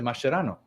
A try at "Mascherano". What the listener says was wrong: No, you say Mashura. You say Mashurano. You've always done that. I never try to correct you, but you say Mashurano. Maschu. You say Maschu. But you say Maschu. You do.